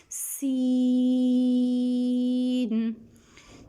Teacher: سین ادا کرتے وقت سیٹی کی آواز آنی چاہیے